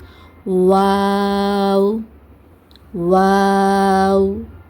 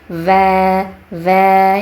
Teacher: உதடுகளை குவிப்பதன் மூலமாகதான் வா உச்சரிக்கப்படுதே தவிர பற்களுக்கு இங்க வேலை கிடையாது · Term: உதட்டுடைய எழுத்து